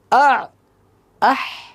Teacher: দুই নাম্বার মাখরাজ আইন হালুকের মধ্যে হতে উচ্চারিত হয়